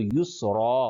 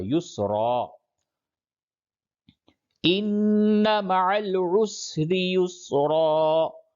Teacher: دو زبر پہ جب وقف کرتے ہیں تو ساکن نہیں کرتے، جزم نہیں دیتے، بلکہ ایک زبر اور الف پڑھا جاتا ہے